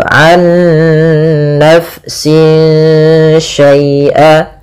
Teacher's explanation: kita harus membacanya nunnya masukkan ke nun kedua dan disertai dengan gunnah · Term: idgham bi gunnah